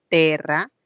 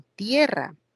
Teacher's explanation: Eso se llama diptongación. Diptongo, E, se convierte en IE, terra, tierra.